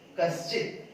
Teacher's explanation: विसर्ग के बाद च, इसलिए ये विसर्ग तालव्य श में बदला है।